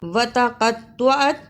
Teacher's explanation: قاف کو موٹا پڑھنا، طا کو صحیح پڑھنا، اس کی جگہ تا نہیں پڑھنا